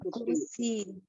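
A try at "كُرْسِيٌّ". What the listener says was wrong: Kursi, yunnya dibaca. Kursiyun.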